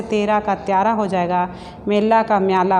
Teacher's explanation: ए के बाद आ ध्वनि पड़ने पर ए का उच्चारण या किया जाता है, जैसे तेरा का त्यारा हो जाएगा, मेला का म्याला हो जाएगा।